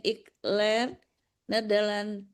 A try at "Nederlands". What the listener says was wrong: S-nya dibaca ya, Bu ya, karena Nederlands dengan S itu bahasanya.